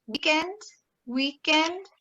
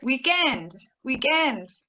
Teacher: stressing the first syllable, or weekend, weekend, stressing the second syllable